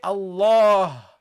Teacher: You see, you go from the ni to nil, okay? And then you pronounce this fatha and you extend it to the alif in pronunciation. Okay, there is alif in pronunciation, not in writing.